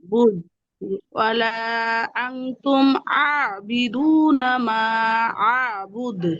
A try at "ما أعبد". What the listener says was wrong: বুদু না, দালের কলকলা জেরের কাছাকাছি হবে। আ'বুদে আ'বুদে বুদে বুদে বুদে।